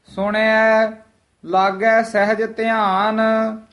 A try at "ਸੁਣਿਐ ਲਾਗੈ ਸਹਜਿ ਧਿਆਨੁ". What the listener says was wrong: ਸਹਿਜ ਦਾ ਹਾਹਾ ਵੀ ਸ਼ੁੱਧ ਬੋਲਣਾ ਹੈ। ਕਈ ਵਾਰ ਅਸੀਂ ਹਾਹਾ ਜਿਹੜਾ ਹੈ ਉਹ ਫਿੱਕਾ ਜਿਹਾ ਪੈ ਜਾਂਦਾ ਹੈ, ਸਹਿਜ ਬੋਲ ਜਾਂਦੇ ਹਾਂ। ਸਹਿਜ ਹਾਹਾ ਜਿਹੜਾ ਹੈ ਉਹ ਉਚਾਰਨ ਸਹੀ ਕਰਨਾ।